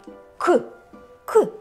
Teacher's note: приголосний звук ми вимовляємо його з перешкодою нам наче Щось заважає його вимовити к і глухо вимовляємо це глухий приголосний